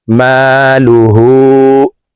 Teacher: হার উপরে উল্টা পেশ আছে তাই এই হাকে ঠোট গোল করে এক আলিফ টেনে পড়ব